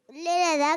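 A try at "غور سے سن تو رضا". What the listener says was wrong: सुन ले नहीं है, ले नहीं है, गौर से सुन लो, रजा भी नहीं है। गौर से, गौर से नहीं पढ़ा आपने, गौर से नहीं सुना जब याद करवा रहे थे। गौर से सुन तो रजा, गौर से सुन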